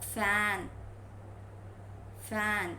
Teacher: when you are pronouncing f sound, you are using lower lip and upper teeth ridge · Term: Labiodental